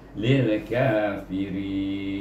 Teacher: Tapi oleh kerana ada huruf nun sebelum huruf ma'asli ini, maka kita kena baca dengan ma'rid sukun, iaitu panjang 2, 4 atau 6 harakah, dengan berakhir dengan mahraj nun